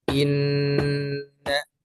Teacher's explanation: suara yang mengalir ke rongga hidung ialah sangat sempurna dan durasinya wajib dipanjangkan dengan dua harokat gunnah. Dipanjangkan atau ditahan suaranya beberapa saat atau diketukan sedang.